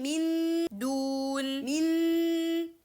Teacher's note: Clarity or al-idhar, we are putting the tip of the tongue on the gums and making the nasal sound. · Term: clear noon